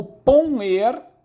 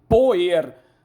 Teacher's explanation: O fonema nasal se transformou em oral, desnasalação.